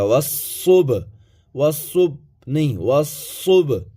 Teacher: با ہے، اس کے اوپر جزم ہے، تو با ساکن ہوا، اور با حروف قلقلہ میں سے ہے، اس لیے یہاں با کو ہلا کر کے پڑھا جائے گا